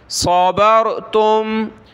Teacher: علیکم بما صبرتم، صاد زبر صا، با را زبر بار، صاد اور را موٹا کرنا ہے دونوں کو